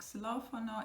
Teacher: When it's the beginning of the word, it's gonna sound like a S, not like an X.